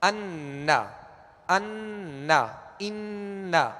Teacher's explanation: جیسے نا اشہد ان، تو اشہد ان لا نہیں پڑھیں گے ورنہ یہ اخفاء کا غنہ ہو جائے گا. اس میں نون واضح اور ظاہر ہوگا اور اس کا غنہ واضح ہوگا · ناک میں آواز لے جا کر ایک الف کی مقدار ٹھہریں گے